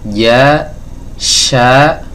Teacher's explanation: Jadi huruf Jim dan huruf syin ini makhrajnya sama tempat keluarnya sama yaitu dari tengah lidah bertemu dengan langit-langit atas ya bagian tengah dari langit-langit atas di sini teman-teman ya baik